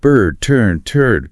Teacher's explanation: that R heavily colors the vowel sound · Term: R-controlled vowels